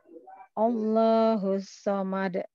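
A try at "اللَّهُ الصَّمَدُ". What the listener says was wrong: Nah, ini juga jangan Allah, tapi Allah. Masih ada W-nya, jangan ada W-nya. Allahu. Allah.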